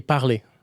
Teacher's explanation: it's written parler with an R at the end. You don't pronounce the R.